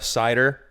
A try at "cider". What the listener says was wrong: like the way you say cider. Cider. It's like you're saying S-I-D-R, like cider. Try again.